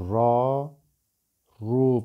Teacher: Ra harfi ötreli ve üstünlü ise kalın okunur.